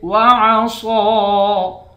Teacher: صاد کو موٹا پڑھیں گے، 1 الف کی مقدار کھینچ کر پڑھیں گے